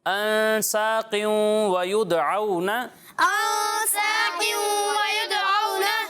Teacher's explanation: یہاں 2 جگہ پر گنہ ہو رہا ہے، اور گنہ کی مقدار کتنی ہے؟ 1 الف کے برابر. ہاں، تو اس مقدار کو آپ نے پورا کرنا ہے.